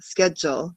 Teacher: And then the D sounds like a J